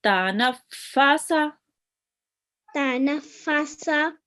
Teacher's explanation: make sure to spend a little bit of time on the fa because there is a shadda on top of it